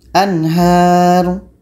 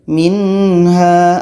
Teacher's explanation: Nun sukun terdengar jelas, ha terdengar jelas, dan tidak ada hum. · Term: izhar halqi